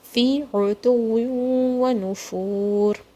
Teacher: Ain has to come from the middle of your throat and it's a digging sound